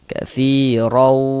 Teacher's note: huruf ra-nya juga dibaca tabkhim, dibaca tebal seperti itu